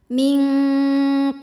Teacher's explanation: yang sukunnya sukun asli dan ada di tengah bacaan cara bacanya ba dipantulkan dengan pantulan yang kecil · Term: Qalqalah Sugra